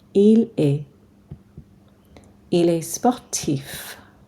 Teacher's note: Remember, we don't say the T or the S on est.